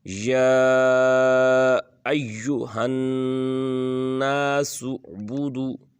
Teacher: یہاں پر یا کو کھینچنا ہے کیونکہ اوپر کھڑی زبر بھی ہے، ساتھ مد بھی ہے، چھوٹی مد ہے، تو اس کو تھوڑا سا 3 الف کے برابر کھینچیں گے